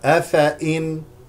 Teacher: افئ هكذا نقراها افئ هذه الياء لا تلفظ